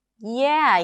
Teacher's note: Notice this intonation, it's kinda like, 'Yeah, maybe', right? That is, it's like up-down-up.